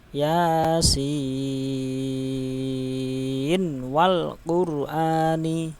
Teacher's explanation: harus dibaca izhar, enggak boleh dibaca idgham dengung tadi ya. Tidak idgham bi gunnah, tak boleh dibaca gunnah dengung.